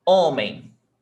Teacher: But the stressed is not the last one, it's the before last, right? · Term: Paroxytonas